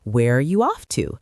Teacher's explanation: Notice the falling intonation here because it's an information question.